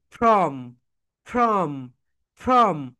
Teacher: যখন উচ্চারণ করবে তখন তোমাদের উপরের দাঁত নিচের ঠোঁটের সঙ্গে টাচ করবে